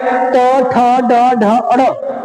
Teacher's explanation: जीवा उलट कर मसूड़ों को स्पर्श करती है · ट, ठ, ड, ढ, अड़ ये कहता है जो जीवा होती है ये जीवा उलट जाती है और मसूड़ों में जाके स्पर्श करने का काम करते हैं बार बार। जैसे होता है बच्चे गोली जो खेलते, कंचा खेलते ऐसे खींचते पीछे खींच के मारते हैं, उसने कहता जीवा ऐसे पीछे आ जाते उलट करके और मसूड़ों को स्पर्श करने का काम करती है। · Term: मूर्धन्य